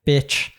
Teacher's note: if you're calling someone like bitch, then it's a downward tone